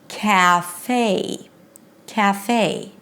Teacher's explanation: It has to close into this nice diphthong ei as in Day · The second syllable is a as in day. It's not a pure e sound, cafe. No, actually in English, you don't have words that end with this pure e sound. It has to close into this nice diphthong, a as in day.